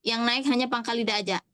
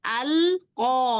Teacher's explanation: Ah, jangan naik depannya. Depannya enggak naik. Yang naik hanya pangkal lidah aja.